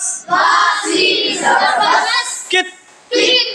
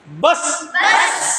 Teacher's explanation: आवाज़ अपने मखरज से टक्का खाएगा, अलग नहीं होगी बल्कि रुक जाएगी, एकदम ब्रेक दे देंगे